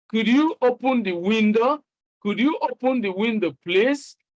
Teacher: you are using the rising tone to sound polite.